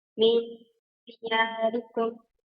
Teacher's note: نون ساكنة مخفى عند الدال المكسورة بغنى حركتين